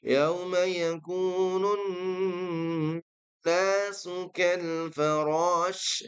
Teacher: Pertama yaitu bacaan dari nun yang bertasydid. Yauma yakunun. Nah, di sini harus didengungkan, nggak boleh buru-buru.